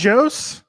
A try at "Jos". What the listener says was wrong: Yos. Yos. Silent J. Yos.